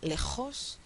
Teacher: Sin embargo, en España la es y ocurre en la región uvular o región, la podemos llamar posvelar, ¿sí? Más atrás de la región velar y es fuertemente fricativa precisamente. · es la J castellana que se produce un poquito más atrás que la J mexicana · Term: fricativa posvelar castellana